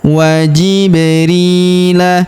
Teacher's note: Huruf ri kita panjangkan dua harakat karena ya sukun di depannya